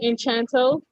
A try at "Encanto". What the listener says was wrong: No, it's not Enchanto. It's not Enchanto. It's not Enchanto. There's no CH in that shit.